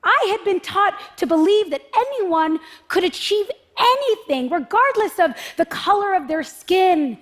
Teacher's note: And there's like this gradual escalation in her pitch